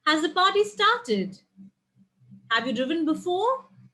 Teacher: so the end is rising you will see